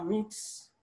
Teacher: T is a voiceless consonant, and then the ES, which is the plural morpheme coming after the voiceless consonant, is always pronounced as S